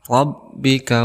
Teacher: ada huruf ro berharakat fathah maka kita hukumi sebagai tafkhim artinya tebal